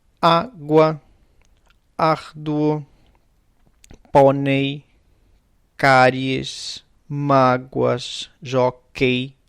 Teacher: A diferença do espanhol e do galego quando acabam em ditongo oral, quer dizer, ditongo oral é um ditongo que não há vogal nasal, ok? É a combinação de dois sons vocálicos, mas são orais, quer dizer, o som sai pela boca só